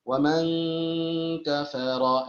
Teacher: tidak ada pengucapan eng, tidak ada bunyi eng dalam ikhfa